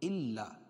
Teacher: الا، لام پر تشدید ہے، حمزہ کو لام میں سختی کے ساتھ ملائیں گے اور تشدید والا حرف 2 مرتبہ پڑھا جاتا ہے